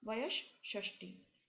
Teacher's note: ये जो विसर्ग है ये भी मूर्धन्य श में परिवर्तित हो गया